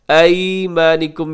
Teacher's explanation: ایمانکم یائے لین ہے کیونکہ یا ساکن سے پہلے زبر ہے